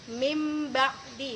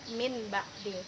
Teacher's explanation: nun mati ketemu dengan huruf ba maka bunyinya menjadi mimba'di bukan Min ba'di